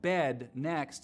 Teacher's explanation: chain shift is each move makes the next one happen so trap moving up higher pushes the dress vowel back in the mouth so words like bed next sound like but next and then